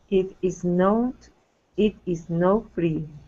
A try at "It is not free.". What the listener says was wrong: Okay, not free. Pronounce that T. Instead of no free, not.